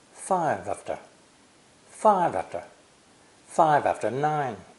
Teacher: the first linking is between five and after